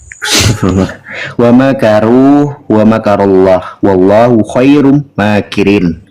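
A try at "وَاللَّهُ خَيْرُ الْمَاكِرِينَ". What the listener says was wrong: Bukan khairum, nggak ada khairum. Mana M-nya? Khairul, bukan khairum. Nah, salah kan?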